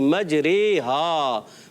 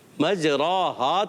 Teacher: الف کو یا کی طرف مائل کر کے پڑھنا زبر کو زیر کی طرف مائل کر کے پڑھنا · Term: امالہ